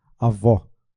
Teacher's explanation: O acento agudo marca vogais com som aberto